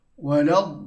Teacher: hendaklah dibaca dengan 6 harakat dan dimasukkan ataupun diberatkan pada huruf lam tersebut. Ya, itulah dipanggil mad lazim kalimi musaqqal.